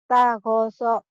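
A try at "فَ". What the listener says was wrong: Tago. Fa. Kedengarannya kayak ta ya. Fa. Fa. Fanta. Fa. Bukan ta ya. Fa.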